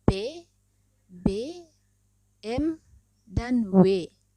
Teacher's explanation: dihasilkan dengan mempertemukan kedua belah bibir yang bersama-sama bertindak sebagai artikulator dan titik artikulasi